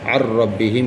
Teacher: ذل پڑھنا, نون کی وجہ نہیں نکلنا اس میں. یہاں پہ نون ساکن کے بعد حروف جر ملون میں سے را آ جائے تو را کی صورت میں بغیر غنہ کے ملا کر پڑھیں گے